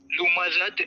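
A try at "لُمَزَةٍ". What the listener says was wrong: یہ زال نہیں ہے، یہ زا پڑھیں گے اس کو ہم.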